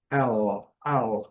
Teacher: E esse L, a gente pronuncia um pouquinho diferente, a gente vai levar a língua ao céu da boca, quase no fundo do céu da boca, já lá no palato, né? L, L, lá no fundo mesmo do céu da boca, dark L.